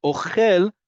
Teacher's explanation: Ochel goes up at the end, right? That's that milra we talked about, where the default is on the last syllable.